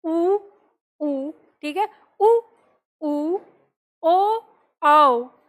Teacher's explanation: तो इन चारों के उच्चारण में हमारे होठ गोलाकार होते हैं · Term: वृत मुखी